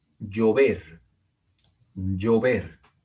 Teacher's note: Acá tenemos otra palabra, una palabra aguda, una palabra que tiene el acento en la última sílaba.